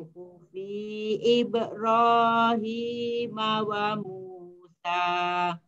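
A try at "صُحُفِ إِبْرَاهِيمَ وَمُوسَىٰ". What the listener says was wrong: Suhufi, fi-nya tidak boleh panjang. Suhufi Ibrahim wa Musa.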